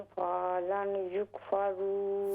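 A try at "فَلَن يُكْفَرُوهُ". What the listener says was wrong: फलई फा को अगर आप लंबा करेंगे अलिफ बन जाएगा, फलई युकफरू,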